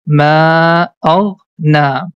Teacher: That's why we are going to say small alif. The function of small alif is we have to stretch the fatha sound for two count. So letter noon has a fatha on the top. · So letter noon has a fatha on the top. So this na sound, we have to make it long because of small alif.